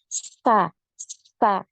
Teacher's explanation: huruf Sin ini punya aliran nafas ya ada aliran nafasnya ya Kemudian dari segi suara juga punya aliran suara